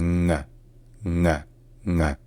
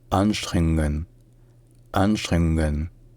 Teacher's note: au lieu de faire N puis G, faites un N, un son nasal, là où normalement est fait le G.